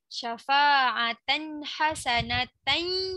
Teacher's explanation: Tapi tanwin jumpa ha jangan dengung ya, kena bunyi jelas.